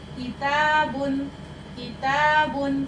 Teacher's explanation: سخت تالو سے لگے گی تو باریک آواز میں، کیونکہ کاف ہمارا باریک ہے